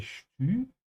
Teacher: for the umlaut here, the two dots, you have to stretch your tongue forward to say stü